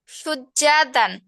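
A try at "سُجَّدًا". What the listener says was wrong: হ্যাঁ, যা কিন্তু টান হয়ে যাচ্ছে, টানা যাবে না। সুজ্জাদান।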